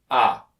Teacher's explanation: the first sound is produced with the tongue on the bottom and in the center of the mouth ah the second sound is the short i sound which is